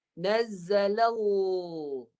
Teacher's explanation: lamnya inhiraf melencong dan bunyinya tebal. Pangkal lidah belakang naik. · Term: lam kalimah Allah